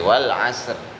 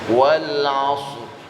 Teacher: Ingat sodnya monyong ya. Langsung ro-nya masuk ke sod.